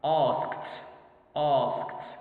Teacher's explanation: But here ask or ask ends with k, plosive, voiceless. So the ed is pronounced t.